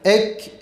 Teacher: Bunlar da ikisinin beytini yazarsak ortak harflerin kef ve te olduğunu görürüz. Yani kef ve te harflerini biz telaffuz ederken ses akmaz ama nefes akar. O yüzden biz kef harfini okurken sesini akıtmadan okuyacağız. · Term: şiddeti mehmuse